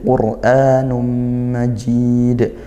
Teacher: tanwin bertemu mim dibaca masuk dan dengung seolah gak ada bunyi nun pada tanwinnya karena dia langsung idgham langsung masuk ke mim dan tadi disertai dengung majid mad arid sukun Boleh satu, dua atau tiga alif dengan catatan konsisten gitu ya.